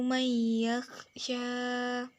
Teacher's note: Pada ayat ke-10 terdapat 2 hukum bacaan, yaitu yang bergaris bawah nomor 33 yaitu idgham bi gunnah lantaran karakter nun sukun bertemu karakter ya bertasydid dibaca masuk dengan dengung dan ditahan hingga 3 harokat